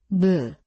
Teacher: 미음, Is the shape of closed lips. 무, The two lips meet and close.